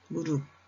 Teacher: 부엌, 키읔은 기역으로 소리가 납니다. 무릎, 피읍이 비읍으로 바뀌어 소리가 납니다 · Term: 음절의 끝소리 규칙